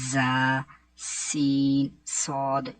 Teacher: ان 3 حروف یعنی کہ زا، سین، صاد کو ادا کرتے وقت سیٹی کی طرح کی آواز نکلتی ہے، اس لیے ان حروف کو حروف صفیریہ یعنی سیٹی والے حروف بھی کہتے ہیں.